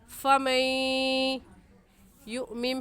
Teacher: یہاں پر فمئی پر غنہ کریں، کیونکہ نون ساکن کے بعد حروف یرملون میں سے یا آگے ہے، تو غنے کے ساتھ ساتھ ہم ادغام بھی کریں گے